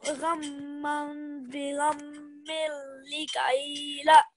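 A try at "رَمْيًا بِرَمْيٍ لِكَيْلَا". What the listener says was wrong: Yep, just make the final la a little bit longer. So read it one more time.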